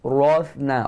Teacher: huruf tha berangin satu. Jangan kancing gigi, lidah keluar di antara dua gigi